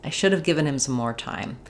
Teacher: should given time are important in this sentence. They're going to get more length.